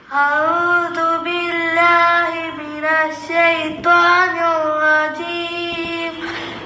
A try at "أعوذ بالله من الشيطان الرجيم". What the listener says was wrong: അഊദു ഐനിന് ബൊമ്മ വരുന്ന സ്ഥലം, ഐന എന്നല്ല ഏത് അക്ഷരത്തിനും ബൊമ്മ ആണെങ്കിൽ ചുണ്ട് മുന്നോട്ട് കൂർപ്പിച്ച് ഉച്ചരിക്കുമ്പോഴാണ് അതിൻ്റെ ഉച്ചാരണം പൂർത്തിയാകുന്നത്. ഫകുല്ലു മദ്മൂമിൻ ഫലൻ യതിമ്മ ഇല്ലാ ബിദമ്മി ശഫതൈനി ദമ്മ എന്നാണ് ഇമാം ജസരി റഹ്മത്തുള്ളാഹി അലൈഹി പറയുന്നുണ്ട്.